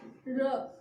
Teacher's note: उच्चारण करते समय जीभ में क्या होता है? कंपन होता है। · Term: लुंठित